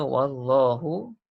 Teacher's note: Seterusnya wallahu, kalimah Allah, lam dibaca dengan tebal pada kalimah Allah kerana baris sebelum tu waw tu baris atas